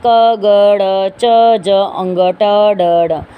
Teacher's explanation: अलप प्राण, अलप यानी वायु कम बाहर निकलती है, जैसे क ग ड़ च ज अंग ट ड ड।